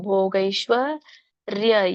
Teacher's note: ಶಕ್ಕೆ ವ ಒತ್ತಿದೆ, ಶ್ವ ಹೇಳ್ಬೇಕು. ಭೋಗೈಶ್ವರ್ಯ ಯಕ್ಕೆ ಅರ್ಕಾವಳಿ ಇರೋದ್ರಿಂದ ಮೊದ್ಲು ರ ಹೇಳಿ ಆಮೇಲೆ ಯ ಹೇಳ್ಬೇಕು.